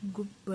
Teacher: ಗು ಬಗೆ ಬತ್ತಿದೆ ಚಿಗೆ ಚತ್ತಿದೆ ಗುಬ್ಬಚ್ಚಿ ಗುಬ್ಬಚ್ಚಿ ಒತ್ತಿ ಹೇಳಬೇಕು ಗುಬ್ಬಚಿ ಅಲ್ಲ ಗುಬ್ಬಚ್ಚಿ ಹಚ್ಚಿ ಅಂತ ಒತ್ತಿ ಹೇಳಬೇಕು ಇದು ಸಜಾತಿಯ ಒತ್ತಕ್ಷರ ಇರುವ ಪದಕ್ಕೂ ಕೂಡ ಒಂದು ಉದಾಹರಣೆ ಆಗುತ್ತೆ